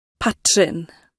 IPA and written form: ˈpatːrɪn (patrin)